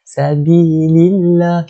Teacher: Kita sebut dia adalah sebagai lafzul jalalah. Jadi lam pada kalimah Allah itu dibaca dengan muraqqaqah. Dibaca dengan dalam keadaan nipis, dinipiskan.